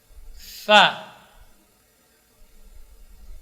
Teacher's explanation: Fa huruf hamas, ya, fa dan rakhawah